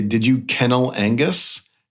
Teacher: you have to be very careful about where you place the glottal between kennel Angus. You got to have some space in there.